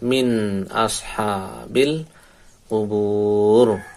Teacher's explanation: nun sukun ketemu hamzah izhar, jelas nunnya